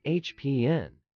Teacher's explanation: with the emphasis on the first syllable hap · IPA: /ˈhæpən/